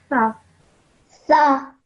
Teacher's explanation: you produce the sound with your tongue touching your top teeth